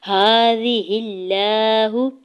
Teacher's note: ہا کے اوپر کھڑی زبر ہے، دو حرکت کھینچ کے ادا کرنا ہے۔ ہا کے زیر کو لام جلالہ کے ساتھ ملاتے ہوئے لام جلالہ کو باریک ہی پڑھیں گے، موٹا نہیں کرنا۔